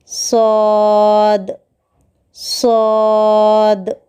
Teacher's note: زبان کی نوک کو نیچے کے دانتوں کے اوپری حصے کو لگانے سے صاد ادا ہوتا ہے